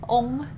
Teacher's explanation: it's not a short O sound like a lot of people default to as English speakers. It's really a long O sound. So ong instead of ong.